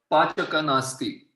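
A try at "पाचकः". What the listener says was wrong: Pachakaha nasti. You have to say the visarga also. Pachakaha.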